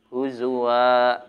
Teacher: Kalau dua menandakan ada dua harkatnya, jadi fathatain. Diwakafkan, jadi dibacanya huzwa seperti mat tabi'i panjangnya, maka disebut bacaannya mad iwad.